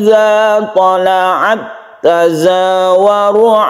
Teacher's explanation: tidak berlaku hukum mahmus karena dia itu sudah tasdid ke ta jadi tidak ada hembusan nafaz ketika kita sukun ta tersebut · nun mati bertemu dengan Kaf ini kita baca ikhfa kita samarkan